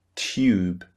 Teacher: So after the T sound, the T sound, we produce the Y sound.